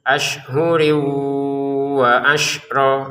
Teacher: tanwin bertemu wau masukin ke wunnya dengan denggungan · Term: dengungan